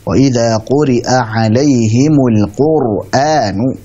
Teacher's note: Ra-nya tebalkan. Dinaikkan pangkal lidahnya. Nah, seperti itu. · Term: Tebalkan ra-nya